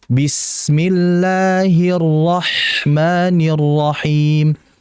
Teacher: sin sama ha itu dalam kondisi sukun dia sifatnya rokhawah, berarti ngalirnya cukup lama ya dibandingkan yang tawasud tadi.